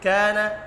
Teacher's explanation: کان الف مدہ ہے، ایک الف کے برابر کھینچ کر پڑھیں گے۔